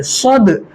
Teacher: صد, یہاں پہ دال کے اوپر جزم آ رہا ہے تو دال میں قلقلہ کریں گے